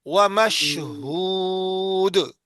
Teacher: شین میں منہ میں آواز پھیل جائے